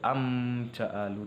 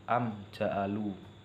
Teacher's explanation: dilafalkan terang dan jelas tidak boleh mendengung posisi bibir mengatup ketika membaca huruf mim sukun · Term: izhar syafawi